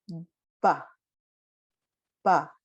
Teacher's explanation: of this sound with voice is this sound which is ba you can't say the b without voice try to say the b without voice it comes out like a p